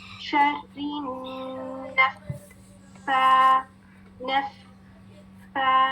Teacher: पहले आपने नून मुशद्दद में 2 काउंट्स गुन्ना करना है, फिर फा मुशद्दद में 2 फा अदा करनी है, तो हम जल्दी से नहीं पढ़ सकते, ठीक है। जब हम साकिन फा अदा करेंगे तो उसकी क्वालिटी सुने, इसमें आपको एयर फ्लो भी फील होगा, साउंड भी फील होगी